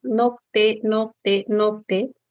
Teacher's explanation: noc no Cuál es la dirección que tiene la lengua nocte cuando dices nocte la lengua va de la parte posterior noc y luego se dirige hacia delante